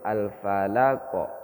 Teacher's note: Jadi huruf qafnya itu dipantulkan, bukan hidup. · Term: qalqalah